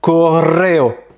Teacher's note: le fameux double R, vraiment le gros R roulé qui est très très fort.